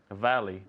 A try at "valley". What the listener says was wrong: Y mira, no me dice valley. Valley. La V y la B en inglés son muy distintas. Valley. Mira, los dientes de arriba aquí. Valley.